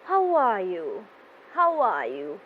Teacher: i have a falling voice at the end of my question